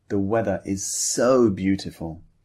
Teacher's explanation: don't just say the weather is so beautiful in a flat tone. Emphasize the word so.